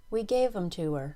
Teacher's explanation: the only content word of the sentence gave carries the main stress